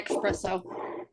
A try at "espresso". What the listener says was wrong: There's no X in espresso. Espresso. It's ES.